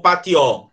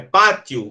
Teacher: Então, o I é mais forte do que o O. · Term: semivogal